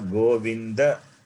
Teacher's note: You are reading the Govinda as Govind like in Hindi.